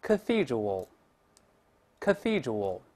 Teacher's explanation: 出现 th 了，要把舌头吐出来一点